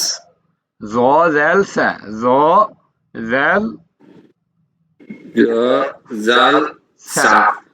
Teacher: জিহ্বার আগা সামনের উপরের 2 দাঁতের আগার সঙ্গে লাগিয়ে উচ্চারিত হয়